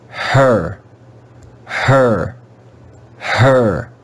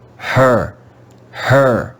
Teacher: The English letter E is also read with the schwa sound before the letter R.